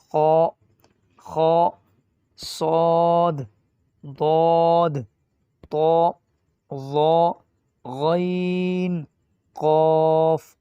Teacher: آواز کو موٹی کر کے پڑھے جاتے ہیں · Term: موٹے